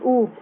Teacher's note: ऊ को बोलेंगे तो आपका होठ गोल होगा